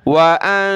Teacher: نون ساکن ہے اس پر ہم نے ناک میں آواز پیدا کرنی ہے جس کو اخفا کہتے ہیں وَأَنفِقُوا قاف کو موٹا کریں گے